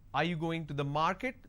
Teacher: this is going up because a last word denotes like it's a question